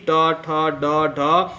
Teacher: तो मूर्धा से निकलती है।